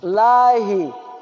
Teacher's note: Hai tempatnya tenggorokan bagian bawah